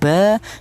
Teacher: untuk huruf mim dan huruf ba ini yaitu dihasilkan dari kedua bibir yang rapat. Kita bilang ba, kita bilang ma itu melibatkan kedua bibir.